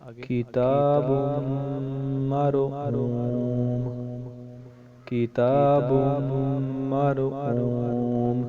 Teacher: تا کے اوپر کھڑا زبر ہے، اس کو ہم 1 الف کی مقدار لمبا کریں گے۔ اور با میم کے ساتھ ملے گا، اور میم کے اوپر تشدید ہے، اس لیے میم پھر اگلے والے حرف کے ساتھ ملے گا، کیونکہ را کے اوپر را ساکن ہے۔